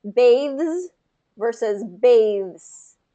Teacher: Get that voiced consonant and kind of hold it a little bit longer to pull out that voiced ending.